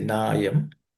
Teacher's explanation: Na plus ayam are the next two words which join to make nayam. That is, na plus a becomes a longer na.